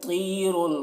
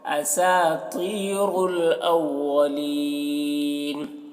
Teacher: طا کو موٹا کرنا ہے، را کو بھی